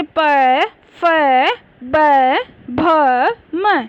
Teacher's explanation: दोनों ओष्ठ यानी दोनों होठ आपस में मिलते हैं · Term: ओष्ठय्य